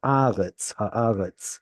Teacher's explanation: Be careful about the tzadi, that it makes something more of a TS sound and not a Z sound.